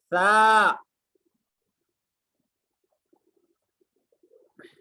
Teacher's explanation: तो ये सा की अदायगी, सा के बारे में अच्छी तरीके से समझ लीजिए कि जबान की नोक और सामने के ऊपर वाले दो दांतों के किनारे से अदा होता है, जबान थोड़ी सी बाहर नजर आती है।